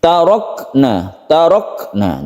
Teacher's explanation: Kaf itu ada sifat hamsnya bukan qalqala tidak memantul dia meleleh sendiri Kita ketika membaca sukun Kaf ini kita hembuskan nafas sedikitna un